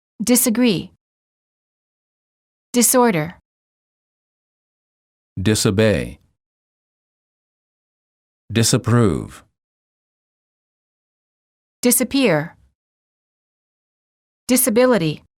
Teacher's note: The S in the prefix dis is pronounced as S and not as Z.